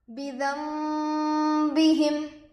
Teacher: نون ساکن ہوگا، نون ساکن کے بعد با آ کر ہے، اس لیے گنہ اور اخفا کے ساتھ پڑھیں گے، اس کو اقلاب کہتے ہیں۔ با پر زیر کی حرکت ہے، جلد پڑھے۔